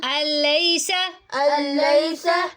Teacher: نون نہیں پڑھا گیا، ٹھیک ہے، کیونکہ نون لام میں داخل ہو گیا، ٹھیک ہے۔ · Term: ادغام